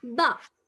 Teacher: இந்த ஷஃபாவும் ஷஃபாவும் இன்திபாக் ரெண்டு சேர்ந்து மூடிப்பட்டாச்சு. மாபால் ஒன்றோட ஒன்று சேர்ந்துட்டுது.